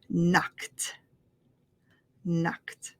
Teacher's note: when you have a k a k at the end and we add an e d it makes the t sound